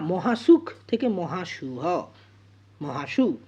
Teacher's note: স্পর্শধ্বনি উচ্চারণ করতে গিয়ে শ্বাসবায়ু আংশিক বাধা পায় এবং সেই স্পর্শধ্বনি উষ্মধ্বনিতে পরিণত হয়, হটা উষ্মধ্বনি। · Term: উষ্মী ভবন